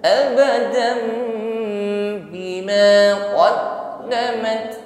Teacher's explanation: tanwin fathah bertemu ba, dan di sini kita ganti dengan huruf mim, langsung bibirnya rapat dan dengungkan, ya. Ada hukum iqlab namanya, tanwin diganti menjadi mim.